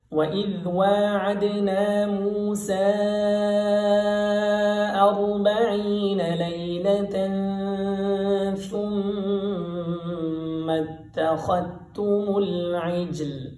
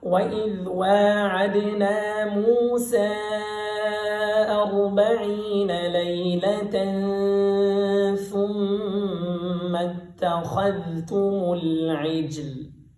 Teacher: امام حفص رحمۃ اللہ علیہ کیسے پڑھتے ہیں وہ ذال کو اظہار کر کے پڑھتے ہیں